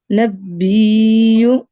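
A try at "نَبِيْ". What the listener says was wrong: لمبا نہ کریں، کسی جگہ بھی لمبا نہیں ہم نے کرنا، جیسے آپ نے نبی. اچھا سکون ہے، ہم صرف جوڑیں گے، جوائن کریں گے. ٹھیک ہے، ملائیں گے اس کو. ٹھیک ہے، اس پہ کوئی حرکت نہیں ہے.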